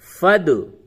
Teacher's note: یہ دال ساکن ہے، اس پہ قلقلہ کریں.